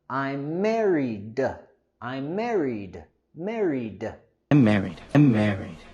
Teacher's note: La terminación de ed en married queremos pronunciar con el sonido d.